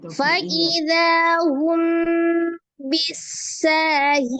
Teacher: Fa'idha, zanya mad, ada alif sebelumnya fathah di huruf zal 2 harakat. Hum bi mim sukun bertemu dengan huruf ba. Hukumnya adalah ikhfa safawi ya, mim sukun bertemu dengan ba. Dibaca dengan samar ya, disertai dengan gunnah dengung. Tingkatan gunnahnya adalah kamilah ya, ikhfa masuk di dalam gunnah tingkatan yang kedua, kamilah sempurna ya.